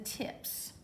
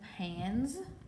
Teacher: if suffix s follows an unvoiced consonant the S is unvoiced as in tips if suffix as follows a voiced consonant the S is voiced